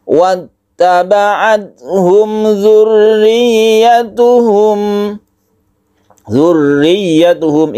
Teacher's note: Mem mati bertemu dengan zal, izhar syafawi ini tidak didengungkan. Humnya tidak panjang tapi langsung ke zal. wattaba'athum dzurriyyatuhum ini ada tasydid yang harus kita tekan.